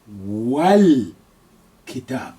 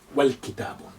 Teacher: because this weak alif is not any longer at the beginning, the sound on it will be removed and suppressed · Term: silent letter